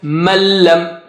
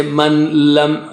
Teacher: So for that we have the sign like, first of all, without ghunna, so there's no movement, okay, there's no and second thing is its merger is complete also, so you just take it behind, so there is no more sign, no more sound of nun sakin, it just disappears like in la and ra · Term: merger without ghunna